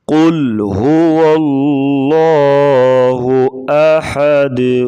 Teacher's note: قل کا جو قاف ہے، قاف کو موٹا کریں گے حروف مستعلیہ سے، موٹے حروف سے۔